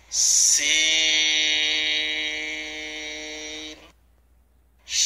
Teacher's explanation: সিন 4 আলিফ টানতে হবে, leak পানসারের আওয়াজ হবে, জিহ্বার আগা নিচের দাঁতের আগায় লাগবে